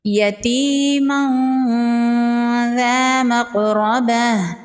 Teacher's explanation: تنوین کے بعد حروف اخفا میں سے ذال ہے، یہاں پر اخفا ہوگا، تنوین کی آواز کو ناک میں چھپائیں گے۔